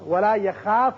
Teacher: خا چونکہ پر پڑا جاتا ہے حروف مستعلیہ میں سے ہے، اس کی وجہ سے الف پر ہوگا. ولا یخاف نہیں پڑھنا بلکہ ولا یخا خا کر کے ولا یخاف ولا يخاف عقباها.